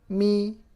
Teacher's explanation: Ya, jadi punya dua makhraj dia. Makhraj dua bibir dan makhraj rongga hidung khayshum. Jadi perlu ada gunnah.